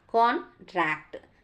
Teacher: as a verb contract that means stress on second syllable